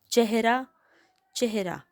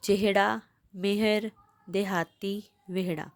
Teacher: ਹਾਹੇ ਅੱਖਰ ਤੋਂ ਪਹਿਲਾਂ ਲਾਂ ਦੀ ਆਵਾਜ਼ ਆ ਰਹੀ ਹੈ, ਏ ਦੀ ਆਵਾਜ਼ ਆ ਰਹੀ ਹੈ ਅਤੇ ਇਸ ਕਰਕੇ ਆਪਾਂ ਇੱਥੇ ਸਿਹਾਰੀ ਪਾਣੀ।